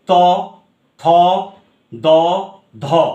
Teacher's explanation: আমি যখন ন উচ্চারণ করছি, ন যেটা থাকার কথা দন্তধ্বনিতে, ত, থ, দ, ধ উচ্চারণ করে দেখো, দাঁতের পশ্চাতে টাচ করছে জিভ